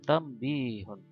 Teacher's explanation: Jadi yang mati nun atau tanwin tapi bacanya seperti mim.